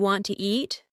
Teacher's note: Sometimes letters are dropped, like the T in want to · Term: connected speech